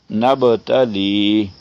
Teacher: اب پھر با پہ قلقلہ آ گیا، با ساکن ہے